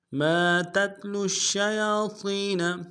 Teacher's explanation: ما میم کے ساتھ الف مدہ ایک مقدار میں کھینچیں گے